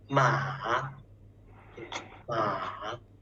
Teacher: First down, then up. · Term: third tone